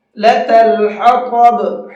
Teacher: طا کو پر کر کے منہ بھر کے پڑھیں گے